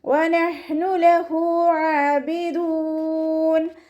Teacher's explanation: തൊണ്ടയുടെ മധ്യഭാഗമാണ് ഹൻ്റെ മഖ്റജ് വരുന്നത്.